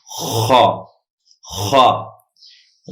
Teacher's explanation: زبان کی جڑ کو اوپر اٹھا کر اندر سے پریشر کے ساتھ آواز نکالیں، خا، خا۔ بیچ حلق سے ہا ادا ہوتا ہے اور آخر حلق سے خا ادا ہوتا ہے، خا، خا، خا۔